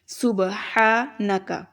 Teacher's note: ہا آگے ہے ہا، اس کو حلق سے ادا کریں گے